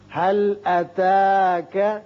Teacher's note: یہاں لام پر قلقلہ نہ ہو